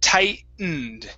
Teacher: we don't actually pronounce the T